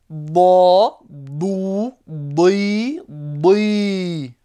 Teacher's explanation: le dod se prononce d'une façon très particulière avec les côtés de la langue qui vont monter et toucher les dents du fond. D'accord, les dents du fond.